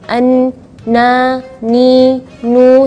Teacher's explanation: Jadi ketika melafalkan huruf nun tidak ada angin yang keluar. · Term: sifat jahar